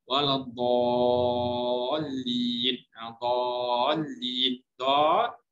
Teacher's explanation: Alif tu bertemu dengan lam, lam tu ada tanda sabdu. So dia akan menjadi enam harakat. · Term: mad lazim